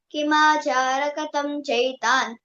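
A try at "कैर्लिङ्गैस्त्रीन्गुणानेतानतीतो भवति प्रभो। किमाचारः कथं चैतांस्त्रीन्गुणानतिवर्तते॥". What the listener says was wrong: అక్కడ విసర్గ చెప్పలమ్మి కైర్లింగై త్రీన్ గుణానేతాన్ అని అక్కడ చెప్పాల కిందట కిమాచారః కథం చైతాన్ అట్లా చెప్పాలి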